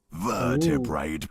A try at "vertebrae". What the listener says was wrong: He also kept pronouncing vertebrae with like an extra like T at the end, saying vertebrate by vertebrate.